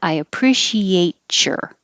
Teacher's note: the t and the y next to each other can make a cha i appreciate sure that's that's what would happen with a t · You don't have to say your. Or the T and the Y next to each other can make a ch.